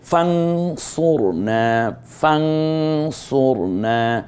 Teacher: ফান না বলে ফাং বলবো, তার কারণ নুন সাকিনের পরে সদ এসেছে